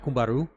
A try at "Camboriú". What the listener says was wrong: Camboriú. Camboriú. Four syllables. Camboriú. Four. Camboriú. Camboriú. Camboriú.